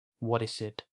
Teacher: What is it? гэж нэг үг мэт холбож хэлдэг. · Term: Үгийн холбоо